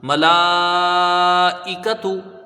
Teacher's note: میم میں زبر ہے، اس کو جلدی پڑھا جائے گا، لام میں کھڑا زبر ہے، الف مدہ ہے، اور حرف مد کے بعد حمزہ اسی کلمے میں ہے تو یہاں مد متصل ہوگا، 2، 2.5، 4 الف تک اس کو کھینچ کے پڑھا جائے گا۔